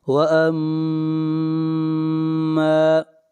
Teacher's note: میم کے اوپر شد ہے، غنہ کریں گے اور میم کو کھینچ کر پڑھیں گے ایک الف کے برابر